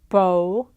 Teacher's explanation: But in one, you have lip rounding as the initial configuration